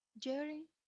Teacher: again i'm using rising intonation but it's not as a very high pitch